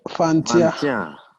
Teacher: You see the T is linked, you slur that. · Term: liaison